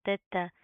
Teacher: ता के ऊपर तशदीद है, सख्ती से जमा कर पढ़ेंगे